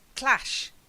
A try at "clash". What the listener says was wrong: Clash. Yeah, not clush, clash.